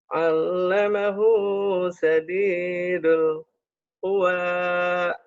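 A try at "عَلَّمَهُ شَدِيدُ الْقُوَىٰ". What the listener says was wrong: Suka ada jeda sama shinnya hutangnya ya. Harusnya. Allamahu syadidul quwa.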